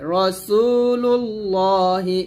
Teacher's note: রা হবে না, র মোটা করে